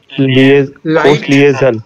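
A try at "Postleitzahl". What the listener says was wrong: नहीं लिए क्यों? लाइट, ई आई कैसे पढ़ते हैं? लाइट साल।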